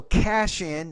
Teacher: So cash in, again, blending. You take the SH and you blend it with the first vowel of the next word.